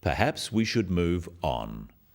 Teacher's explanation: this falling intonation makes it a more definite statement rather than a suggestion · The first one, "Perhaps we should move on," is phrased as a suggestion, but it is said in a firm way with a falling intonation at the end